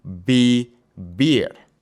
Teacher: the v makes a soft b sound in Spanish. So, with the verb vivir, it won't be vivir.